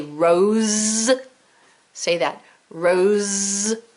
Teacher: you can feel the Z sound in your throat.